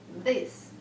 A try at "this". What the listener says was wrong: It was sounding like you weren't voicing it. It was sounding like you were saying this. This is what it sounded like.